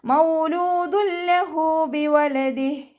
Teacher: തെൻവീനിലുള്ള നൂനിൻ്റെ സൗണ്ടിന് നമ്മൾ ലാമിലേക്ക് ലയിപ്പിക്കുന്നുണ്ട്, പക്ഷെ ഒന്ന കൊടുക്കാതെ ഓത്. മൗലൂദുല്ലഹു എന്ന് പറഞ്ഞ് മണിച്ചിട്ട് അവിടെ ഓതരുത്.